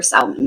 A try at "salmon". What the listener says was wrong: I love that you pronounce L. That is so adorable that you pronounce the L. Salmon.